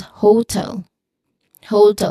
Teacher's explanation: I used a diphthong to make the word or make this first syllable in the word hotel, which is ho. So it sounds like a hoe, like HOE, like a gardening tool.